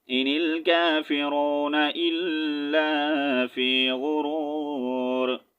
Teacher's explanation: آیت کمپلیٹ ہو رہی ہے وقف کریں گے ٹھیک ہے تو را کو ساکن کریں گے وقف کی صورت میں